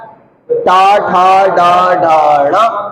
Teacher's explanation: तो ण का नासिका भी है और मूर्धा भी है।